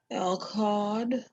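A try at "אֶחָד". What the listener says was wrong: Echad. So there's no L sound, so it's Echad. So Adonai Echad, Ushmo Echad.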